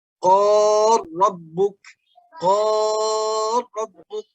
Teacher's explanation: Jadi langsung ke ro ya, lamnya seakan-akan sudah tidak ada. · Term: idgham kabir